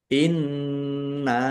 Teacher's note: inna nun tasdid bacaan ghunah atau mendengung ditahan biar tampak mendengungnya · Inna nun tasdid bacaan gunah atau mendengung. Ditahan biar tampak mendengungnya. Kemudian nun fathah alif mat tabi'i tetapi karena bertemu dengan huruf alif di kata yang berbeda maka menjadi mad jaiz munfasil.